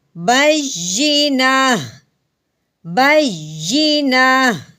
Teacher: آگے وقف کی صورت میں اس بات کا خیال رکھنا ہے کہ جہاں پہ گول تا آئے وقف کی صورت میں تا کو ہٹا دیتے ہیں، پیچھے صرف ہا کی آواز نکالتے ہیں